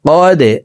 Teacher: লাম ইয়া জবর লাই, ফি লাই, লাম জবর লা, তা লাম জেরে তিল, ফি লাইলাতিল, কফ দাল জবর কদে, দাল কলকলার হরফ নিচের দিকে ধাবিত করে ধাক্কা দিয়ে উচ্চারণ করব